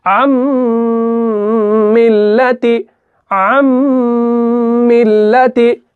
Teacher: नून को हम बिल्कुल भी अदा नहीं कर रहे, यानी नून कहां जाता है, नून इस मीम के अंदर क्या हो जाता है, मुदगम हो जाता है, यानी इसके अंदर मिल जाता है। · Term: इदगाम